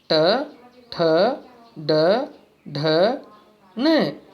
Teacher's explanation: ट, ठ, ड, ढ, न, मतलब ये तालु से थोड़ा ऊपर वाला स्थान होता है जहाँ से वायु टकराकर बाहर निकलती है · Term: मूर्धा